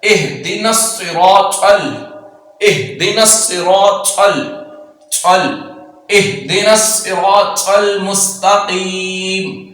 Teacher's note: یہ طا ہے اس کو پر پڑھیں گے